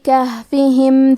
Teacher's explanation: یہاں ہا ساکن ہے، لہذا ہمیں ہاں کو ظاہر کرنا ہے. ہا کی ادائیگی حلق کے نیچے والے حصے سے ہے